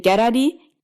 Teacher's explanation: with palatalization, where the middle of your tongue comes up near your hard palate